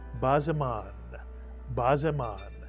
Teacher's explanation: This tells you right away that the shva under the zayin with a dagesh is pronounced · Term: pronounced shva